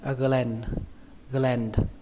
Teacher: Và cái từ này thì các bạn đọc là gland, cách đọc nó y chang cách viết gland. Cách đọc thứ hai của nó các bạn đọc âm a bẹt